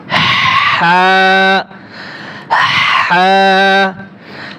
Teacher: আগে গলার থেকে বাতাস বেরোবে।